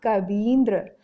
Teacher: इसी प्रकार कवि धन इंद्र, छोटी ई और छोटी ई दोनों मिलकर के बड़ी ई में परिवर्तित हो गए, दीर्घ हो गया उसका, तो हमारा शब्द बना कवींद्र।